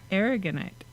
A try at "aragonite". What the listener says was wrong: It's A, not E, A. It's aragonite. A-R-G.